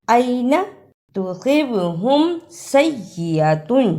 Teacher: صاد کو موٹا پڑھنا اور سین کی صحیح آواز بھی نکالنا، صاد کی جگہ پر سین کی آواز نہیں آنی چاہیے، صاد کو موٹا پڑھنا ہے۔